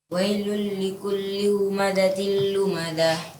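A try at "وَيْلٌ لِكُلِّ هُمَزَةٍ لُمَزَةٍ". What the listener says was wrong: Ya, angin za-nya za digetarkan lagi supaya dia kokoh. Wailul likulli humazatil. Ya, za. Ya, seperti za biasa. Wailul likulli humazatil lumazah. Ada sedikit getaran huruf za, bukan seperti za. Lumazah.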